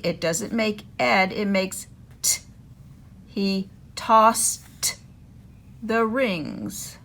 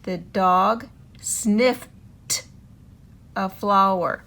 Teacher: Make the T sound, like in toucan, t, t, when it follows words ending in K, S, F, P, CH, and SH.